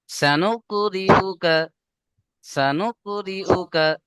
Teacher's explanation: সা টান দিলে হবে না। সিনের উপরে জাবার হারাকাত আছে, জলদি পড়তে হবে।